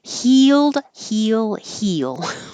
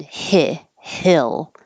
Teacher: heal with your tongue very high